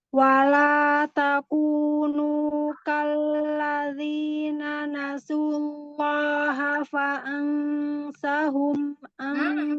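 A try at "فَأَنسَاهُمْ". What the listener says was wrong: Dua harokat. Fa'ansahum, domahnya sempurnakan.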